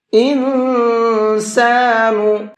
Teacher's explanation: کبرا، یوم یتذکر الانسان ما سعی، انسان، یہاں یہ نون ساکن ہے، اور نون ساکن کے بعد میں سین ہے، سین اخفا کے حرفوں میں سے ہے، تو یہاں نون کے اندر آواز کو ناک میں چھپا کر کے پڑھیں گے، اخفا کر کے پڑھیں گے۔